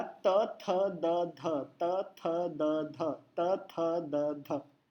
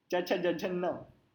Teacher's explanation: जो त थ द ध का न है वो दांतों को टच होगा, और जो च छ ज झ का न है वो ऊपर मसूड़ों के यहाँ पे टच होगा।